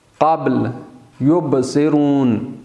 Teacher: با، واو اور میم ان کو حروف شفویہ بھی کہتے ہیں، یعنی دو ہونٹوں سے ادا ہونے والے حروف۔ جیسے قابل دونوں ہونٹوں کو آپس میں ملانے سے ادا ہوتے ہیں